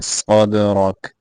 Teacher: دال کے اوپر کلکلا کرنا ہے، صاد کو موٹا کر کے پڑھنا ہے